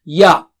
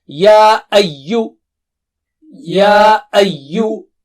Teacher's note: there is mad there and you can see the wave there, so you can stretch 2 times or more